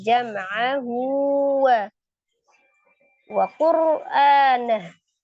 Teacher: Ro sukun sebelumnya dhammah. Jadi ro-nya dibaca dengan tebal atau taqim.